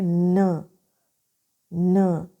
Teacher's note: by raising the tip और blade of the tongue towards the अल्लर ridge to block the air flow